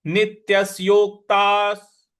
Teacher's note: जो आधा क है उस पर भी हमको आघात देना है